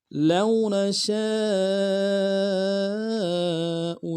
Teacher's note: لو نشاء، لام کو واو کے ساتھ ملانا ہے، واو نین بغیر کھینچے پڑیں گے، نون کو نم سے ادا کریں گے۔ شین کے ساتھ الف مدہ ہے، الف مدہ کے اوپر مد اصلی ہے، دو الف مد میں کھینچیں گے، حمزہ کو نم سے ادا کریں گے۔